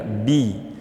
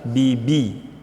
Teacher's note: Saat baca bi, turunkan suaranya biar bi. Seperti kita bilang bibi.